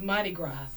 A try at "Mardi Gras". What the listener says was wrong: I say Mardi Gras. I don't pronounce the S at the end, but I just say Mardi Gras.